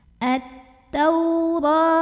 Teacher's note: Nah, ini ada alif lam syamsiyah karena alif lamnya bertemu huruf syamsiyah yaitu huruf ta. Maka ini alif lam tidak perlu dibaca, langsung masuk ke ta. At-taura. Tau huruf lin karena ada waw sukun sebelumnya fathah, maka dibacanya cukup dilembutkan.